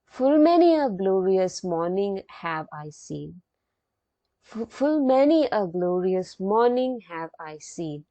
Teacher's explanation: Iambic means here the syllable comes like this, da, dum, that is unstressed syllable followed by stressed syllable, da, dum. So there is a unstressed syllable followed by a stressed syllable.